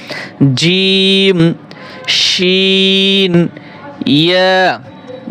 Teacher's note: জিহ্বার মধ্য হতে তার বরাবর উপরের তালুর সঙ্গে লাগিয়ে 3টি হরফ উচ্চারিত হয়